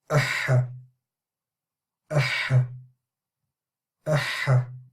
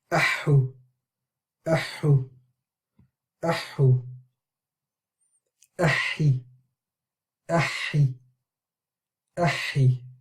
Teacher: The ha you need a lot of emphasis to pronounce the shadda properly, because ha is a letter which you already stay on the sound for quite a while, and it also comes from the deepest part of the throat, a lot of air passing through it